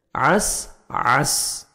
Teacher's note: عین کو اپنے صحیح مخرج سے ادا کر کے سین کو سیٹی کے ساتھ ادا کرنا ہے